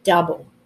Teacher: we've got that oh you spelling pattern but it actually makes kind of an ah sound